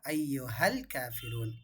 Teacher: அலிஃப்லாமுக்கு அப்புறம் கமரியாவுடைய எழுத்து வந்திருக்கின்றதால இந்த இடத்துல நம்ம லாம தெளிவாக ஓதுறோம்.